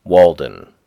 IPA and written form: ˈwɔːldən (Walden)